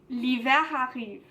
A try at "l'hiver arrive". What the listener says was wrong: Très bien, très bien.